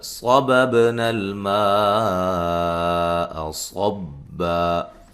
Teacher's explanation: صاد کو موٹا ادا کریں گے، با پہ قلقلہ کریں گے